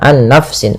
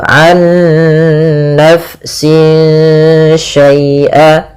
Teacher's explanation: kita harus membacanya, nunnya masukkan ke nun kedua dan disertai dengan gunnah. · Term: idgham bi gunnah